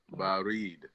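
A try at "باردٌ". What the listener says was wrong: Barid, what? What's on the end of it? Baridun.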